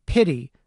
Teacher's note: It's a sound that we refer to as a tap, because the tongue makes a very quick tap at the top of the mouth. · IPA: /t/